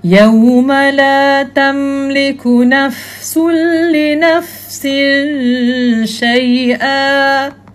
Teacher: Huruf fa tu pun tak boleh lantun sebab dia bukan geng-geng qalqalah kan.